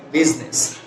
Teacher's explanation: এখানে আই শব্দটা ড্রপ হবে, ড্রপ করলে পরে উচ্চারণটা হয় কি বিজনেস